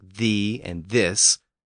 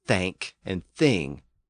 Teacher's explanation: there are actually two different th sounds. There's the voiced sound found in words like thee and this, and the voiceless version found in words like thank and thing.